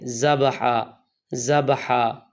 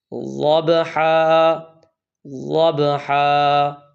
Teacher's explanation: دوسری غلطی یہ ہے کہ یہاں بعض لوگ ضاد کی جگہ زا پڑھتے ہیں، ذبحا ذبحا۔ یہ ضاد ہے اور اس کا مخرج زبان کی کروٹ اور دائیں یا بائیں 5 داڑیں ہیں، یعنی زبان کی کروٹ 5 داڑھوں کو لگا کر جب آپ پڑھیں گے تو اس وقت ضاد ادا ہوگا، اس کی پریکٹس کرنی ہے۔